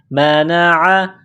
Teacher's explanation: عین گلے کے درمیان سے زور لگا کر عین کو نکالیں گے